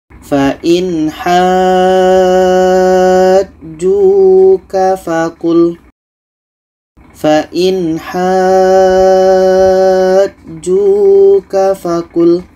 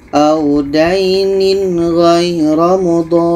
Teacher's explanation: Kita panjangkan 6 harkat baru masuk ke huruf yang ada tasydid. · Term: mad lazim kilmi mutsaqqal